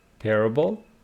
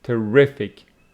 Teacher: terrible stress on the first syllable here we have terrific on the second